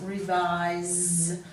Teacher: se on the end of word frequently makes that s say z